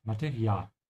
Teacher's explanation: the second A is a bit longer. So stretch it a bit.